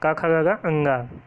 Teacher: तो का वर्ग कंठ से बोले जाते हैं